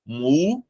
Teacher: O acento, ele está na antepenúltima sílaba. Essa sílaba é a sílaba tônica. Então, aqui, a palavra música, ela é proparoxítona.